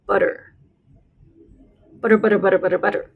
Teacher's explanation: has kind of a almost like a flapped D sound it's like saying the word butter in American English really fast